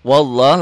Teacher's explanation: lafaz Allahnya dibaca tebal. Kenapa dibaca tebal? Karena sebelum lafaz Allah barisnya di atas.